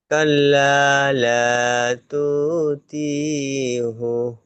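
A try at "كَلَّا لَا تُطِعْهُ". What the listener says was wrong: টান দিচ্ছেন কেন? তু টান হয়ে যাচ্ছে, তি টান হয়ে যাচ্ছে। তুতিউহু। তা পেশ তু, ত আইন জের তিউ, তুতিউ।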